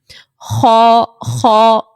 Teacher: کہیں پر بھی آ جائے اس کو آپ موٹا پڑھو گے. خا، خا، پیچھے سے آواز آپ کی بھاری ہو رہی ہوگی، آواز اٹھتی ہوئی محسوس ہوگی